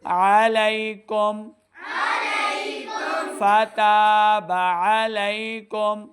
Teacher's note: میم ساکن کے بعد آگے فا ہے، تو یہاں پہ ہم نے بغیر غنہ کے پڑھنا ہے. اظہار کا قاعدہ ہے، اظہار شفوی کا قاعدہ ہے، تو بغیر غنہ کے پڑھیں گے.